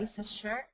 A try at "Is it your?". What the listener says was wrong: That sounded good, but get that CH. Chur. So remember, the chur, when we do the chur sound, it's different from the sure. The sure has a lot of air. Sure. But the chur, we stop here. Chur.